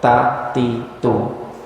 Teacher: ta ti tu ada nafas sikit yang keluar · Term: hams